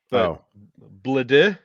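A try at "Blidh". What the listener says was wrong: I think the D is silent. I think it's just like something like They say it's so quick, like I can never pick up on it.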